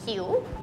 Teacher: you have to say it with a rising tone